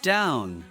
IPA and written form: daʊn (down)